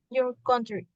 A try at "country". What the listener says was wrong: This is a little strong. Country, country.